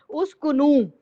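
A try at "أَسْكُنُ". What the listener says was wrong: ये ऊ क्यों लगा रही हो, मेरे समझ में नहीं आ रहा।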